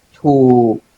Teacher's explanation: low tone with a long vowel